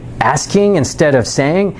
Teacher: you tell me if you've heard this before, when they're talking, everything that they're saying ends on an up note, like they're not sure of themselves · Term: question inflection